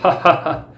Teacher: ਇਸ ਧੁਨੀ ਦੇ ਉਚਾਰਨ ਸਮੇਂ ਸਾਹ ਦੀ ਹਵਾ ਰੁਕਦੀ ਨਹੀਂ, ਕਿਉਂਕਿ ਗਲੇ ਵਿਚਲੀ ਥਾਂ ਸਿਰਫ ਤੰਗ ਹੀ ਹੁੰਦੀ ਹੈ। · ਕੰਠ ਦੁਆਰ ਮਤਲਬ ਆ ਜਿਹੜਾ ਗਲਵਾ ਸਾਹ ਨਾਲੀ ਆ, ਇਹ ਹਾਹਾ ਧੁਨੀ ਦਾ ਉਚਾਰਨ ਸਥਾਨ ਆ। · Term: ਸੁਰਯੰਤਰੀ ਧੁਨੀ